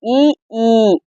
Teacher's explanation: வாய் திறக்கும் முயற்சியுடன் நாக்கின் அடி ஓரமானது மேல்வாய் பல்லை பொருந்தும் முயற்சியால் பிறப்பது ஈ ஈ.